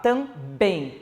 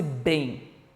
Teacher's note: Olha esse bem. Sai, eu utilizo o lábio, encosto um lábio no outro e sai esse som